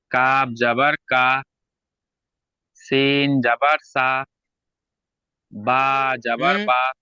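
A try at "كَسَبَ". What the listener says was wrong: হলো না আবারও সেই ভুল দুটো একসঙ্গে যুক্ত করতে হবে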